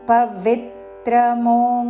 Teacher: పవిత్రమో వి మీద ఆఘాత చివరిలో రస్వము